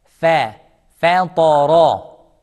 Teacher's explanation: Fa is soft, smile. Ta is heavy, thick, no smile. Ra is heavy, thick, no smile.